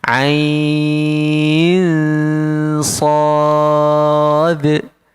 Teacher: Ain kena dengung sebabnya nun sakinah bertemu dengan huruf sad. Kena dengung. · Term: ikhfa hakiki